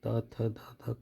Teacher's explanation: दंत से त थ ध ध का उच्चारण होता है